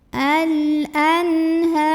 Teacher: nun sukunnya ini kita bunyikan dengan jelas, bunyi dan tidak perlu ditahan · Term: idhar halqi